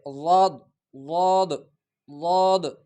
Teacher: اگلا لفظ تا ضاد زبر طد، ضاد زبان کی کروٹ جبڑوں کے جو دانت ہے اس کے ساتھ لگا کر ضاد ادا ہو جاتا ہے۔ ضاد اتنا بھی دال کی طرف مائل نہ کرے کہ دال بن جائے، اور نہ زیادہ ضا کی طرف مائل کر کے، بلکہ ضاد پڑھا جائے، ضاد ضاد ضاد۔